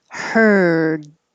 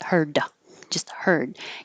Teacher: but beginning with some airflow for the h her and then finishing with your tongue in the d position to stop the airflow and hold your tongue there